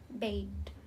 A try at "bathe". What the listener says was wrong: Bathe. Remember the TH? It should vibrate. Bathe. Bathe and then bathe.